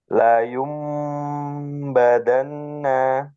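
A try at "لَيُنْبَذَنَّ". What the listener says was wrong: Nah, nun tasdidnya kurang dengung. La yumbadanna.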